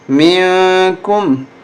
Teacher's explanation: اخفا کریں، ناک میں آواز چھپائیں